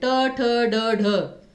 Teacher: मूर्धन्य जब जो है आपकी जीभ जो है मुड़ जाती है, जैसे ट वर्ग में ट, ठ, ड, ढ।